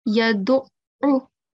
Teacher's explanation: The next thing, when you were reciting the hifz, you didn't stress on ayn. Okay, so on top of ayn, we have tashdeed. So make sure that you stress on it. Make a double sound.